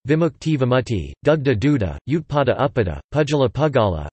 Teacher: In a sequence of two dissimilar Sanskrit stops, the first stop assimilates to the second stop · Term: regressive assimilations